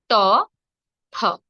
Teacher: জবার আমরা চলে যাই মূর্ধা ধ্বনিতে মূর্ধা ধ্বনি গুলো কিভাবে হবে আমাদের জীভের মাথার অংশটি মূর্ধায় হালকা চাপ দিয়ে উৎপন্ন করবে মূর্ধা ধ্বনি যেমন ধরুন ট ধ জীভের জীভের সামনের অংশটি মূর্ধায় একটু দেখবেন · জীভের সামনের অংশটি মূর্ধায় একটু দেখবেন বাঁকা হয় উল্টো দিক থেকে একটু হালকা চাপ দিয়ে উচ্চারিত হবে মূর্ধা ধ্বনিগুলো